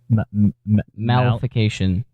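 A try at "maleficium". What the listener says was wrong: There's no tion. No, I think the C is pronounced like an S.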